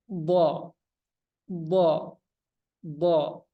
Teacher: kalau do itu D do do bukan d d d ya dia dibiarkan sedikit nempel gitu karena ada ujung lidahnya lengket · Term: huruf DD